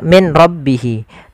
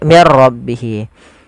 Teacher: suara nunnya dimasukkan ke ro dan diganti menjadi R · Kemudian mir rabbihi, di sini ada hukum tajwid berupa idgham bila gunnah, yaitu adanya nun sukun bertemu dengan ra. Apabila ada nun sukun bertemu dengan ra, maka di sini jangan dibaca min rabbihi, tapi diganti menjadi mir rabbihi. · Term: idgam bila ghunah